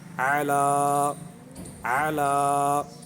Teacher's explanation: اولئک اور دوسرا جو کلمہ ہے اس کو پڑھیں گے اعلیٰ، اعلیٰ عین کی آواز نکالیں گے اور کھڑی زبر کا خیال کرتے ہوئے اس کو دراز کریں گے، لام کو دراز کریں گے